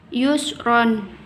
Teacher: hukum bacaan mad iwad karena ada huruf mad tabi'i di akhir kalimat dan cara membacanya panjang 2 ketukan